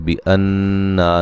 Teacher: नून मुशद्दद पे गुन्ना ज़रूरी है